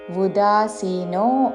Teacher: ఉ హ్రస్వము ఉదాసీనో అని ఊతో పలకకూడదు